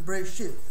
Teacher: the TH of think, that's how they pronounce it, the last letter, the Saf